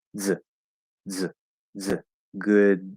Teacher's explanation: it kind of just sounds like a z that is being forced through a small hole · that S is changing into a Z sound because of the effect of the D voice. And so what we're going to do is we're going to release that D and just kind of push a Z through the D.